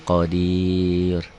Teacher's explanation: Ro-nya tipis karena sebelum ro dimatikan, ro sukun, hurufnya ya dan berkasrah di sini. Qadir gitu ya, pendek jadi kosar.